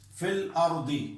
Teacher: اسی طرح ایک اور مثال بھی جو میں نے یہاں کتاب میں دی ہے، فی الارض، اس میں بھی یہ ہے، فی میں بظاہر تو شرط مد ہے یا ساکن سے پہلے زیر ہے، لیکن اس کے بعد الارض جو ہے وہ چونکہ لام سے مل رہا ہے اور بیچ کا جو الف ہے وہ حمزۃ الوصل ہے، حمزہ وہ نہیں پڑھا جاتا ہے، تو اس کے اندر بھی مد نہیں ہوگا